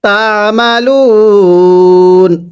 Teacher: ওয়াকফের সময় তিন আলিফ টান দিব